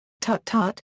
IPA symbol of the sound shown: ǀ ǀ